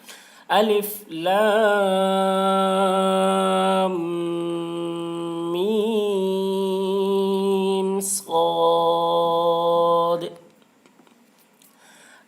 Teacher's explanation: میم کی آواز کو ناک میں لے جا کر ایک الف کی مقدار کھینچیں گے، اس کو غنہ کہتے ہیں۔